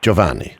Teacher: just make the G like a J, and forget the I.